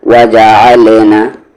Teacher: عین کا مخرج یعنی کہ ایگزٹ بیچ والا حلق